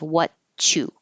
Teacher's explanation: So first we get rid of the R, and now we have what and you, and the T and the Y next to each other make a ch sound